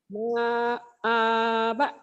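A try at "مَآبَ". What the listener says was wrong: Salah, ma-nya pendek. Salah. Yang panjang ini Bu, yang tengah ini. Ma'aba.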